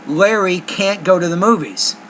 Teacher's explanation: when it's negative I stress both words · I stress can't and go. I stress the auxiliary and the main verb. So I say Larry can't go to the movies.